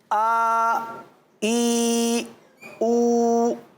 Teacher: आ की आवाज़ आएगी ना, आ, हा की आवाज़ नहीं आएगी क्योंकि हम हमज़ा पढ़ रहे हैं